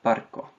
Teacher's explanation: to have closed syllables like in the word for work Barco a short vowel followed by a consonant cluster across syllable boundaries